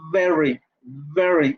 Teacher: Y la segunda es labiodental fricativa, entonces pongo los labios en los dientes y digo very, y tengo que hacer la fricación